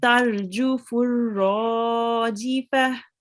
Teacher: Normally we would read it too, but because it's just before a stop sign, we will read it as a ha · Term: tal marbuta